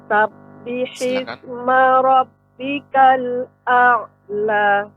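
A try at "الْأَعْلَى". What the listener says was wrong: A'la. Jangan takut untuk memanjangkannya, tetap dibaca saja, ditekan a'la. Sabbihisma rabbikal a'la.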